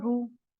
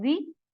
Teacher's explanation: when ra having fatha and damma, so ra will be recited as a bold letter, and when ra has a kasra, it's a light letter.